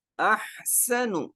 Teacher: سین کا ہم نے پڑھا تھا کہ سیٹی کی آواز آئے گی